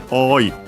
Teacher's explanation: Funny enough, again with also the small tsu then at the end. So yeah, first we have the longer vowel oi, and then an abrupt end with technical glottal stop.